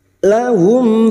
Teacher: kita baca tarkik atau tipis mim sukun bertemu Fa Idhar syafawi mim sukun dibaca jelas tanpa mendengung